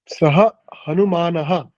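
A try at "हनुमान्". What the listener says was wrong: Yes, Hanuman is correct, but we will stop at Hanuman. There is no visarga.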